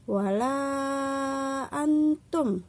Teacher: Contohnya adalah wala antum. Nah, itu harus panjang la-nya, panjang 6 harokat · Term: mad jaiz munfasil